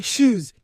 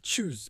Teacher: they'll say shoes instead of choose, because that CH is sh